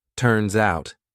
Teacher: I'm using that S to glide to the next word, but I say it as one word